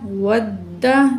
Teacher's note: वाव ज़बरदाल, वद दाल ज़बरदा, वद्दा दाल में सख्ती पाई जाएगी तशदीद की वजह से